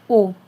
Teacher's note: गोला, ठीक है। यानी बोलने पे ओठ और जीभ हमारी क्या हो रही है? गोल हो रही है। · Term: विवर्त स्वर